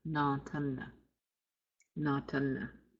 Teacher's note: you might hear it pronounced with a nasal A